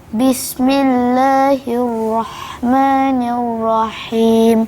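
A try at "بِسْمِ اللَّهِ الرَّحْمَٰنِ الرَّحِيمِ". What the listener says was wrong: Betul lah hanya, tapi ra pula tinggal ekornya, tak ada.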